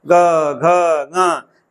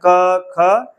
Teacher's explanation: फेफड़े पर बल नहीं पड़ रहा है वहां से कोई कंपन नहीं हो रही है इसका मतलब ये दोनों लोग जो हैं इनमें कोई कंपन नहीं है अघोष है मतलब इनमें आवाज नहीं है हमेशा हमेशा बताया जाता है।